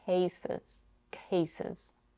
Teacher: she slightly aspirates k at the beginning of the first syllable, which is stressed.